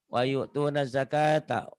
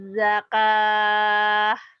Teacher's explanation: Wayu tunaz zakah jadi T-nya jadi H ujungnya karena tamar butoh. Tamar butoh itu kalau dihentikan bunyinya jadi H. Tapi kalau dibaca disambungin wayu tunaz zakata gitu ya.